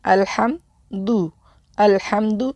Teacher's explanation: اس کو دال کو موٹا نہیں کرنا